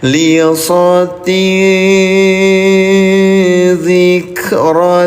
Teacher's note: dibacanya samar nih bunyi nun sukunnya atau tanwinnya tahan dua harakat